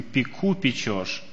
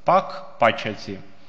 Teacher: То есть «к» изначально звук считается, но перед гласными «и» и «э» он становится «ч». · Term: палатализация